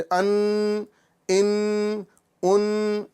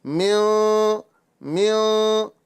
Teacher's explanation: तो हमने ज़बान को तालू से हल्का सा जो है दूर रखा है, टच नहीं किया है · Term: इख्फा वाला गुन्ना